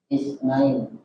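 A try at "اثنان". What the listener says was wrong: Ithnani. Dia bukan pakai sin ya, tapi pakai fa. Ithnani. Ithnani.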